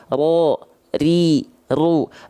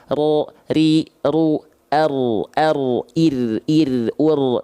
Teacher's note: Dia bergetar tapi tak terlampau berlebihan getarannya. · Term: takrir